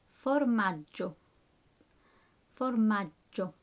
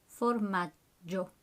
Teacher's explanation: Again, double G, so there's a slight pause.